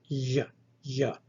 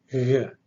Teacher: It is a velar consonant that is vocalized, but it is not a stop. It is aspirated.